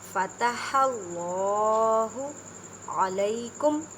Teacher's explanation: یا ساکن سے پہلے زبر ہے، یا لین کا قاعدہ کریں، مینس کے نرمی سے پڑھیں۔